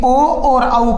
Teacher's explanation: ओ और औ का उच्चारण स्थान क्या होता है? कंठोष्ट होता है।